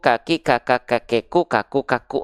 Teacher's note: Hams itu artinya adalah mengalir nafas, tapi pengkhususan untuk dua huruf yaitu huruf kaf dan huruf ta, dia kadar nafasnya hanya berupa percikan-percikan saja.